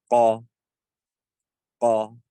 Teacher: You should be feeling the furthermost part of your tongue raised